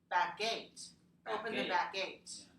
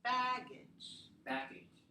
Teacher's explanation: Here, back gate, we'll put more stress on gate, right? In here, baggage, the stress is on the first syllable.